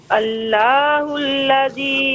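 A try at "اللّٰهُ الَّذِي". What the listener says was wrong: اللہ کو ذرا پر پڑھیں، اللہ الذی،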